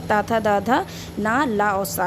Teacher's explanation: व्यंजन है ता, था, दा, धा, ना, ला और सा, ये दंत से बोले जाते हैं। दांतों में जीभ लगा के बोलते हैं तो ये इसको दंत बोलेंगे